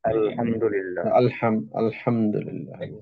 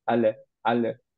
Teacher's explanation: সুকুনের জন্য লামে কলকলা হচ্ছে না